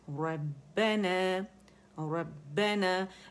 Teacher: फिर रॉ मोटा है, ठीक है, मुखफ़्फ़म है, बा बारीक है। · इसमें 2 बा हैं, एक जो है वो साकिन है और दूसरा ज़बर के साथ है, लेकिन हमने उसे जमाव देना है और स्प्लिट्स ऑफ सेकंड का पॉज देना है शिद्दा की सिफ्त की वजह से, ठीक है। रुकना नहीं, हम यूँ नहीं कह सकते रब्बना, रब्बना, 2 बा अलग से नहीं अदा कर सकते, जमाव देना है, ठीक है।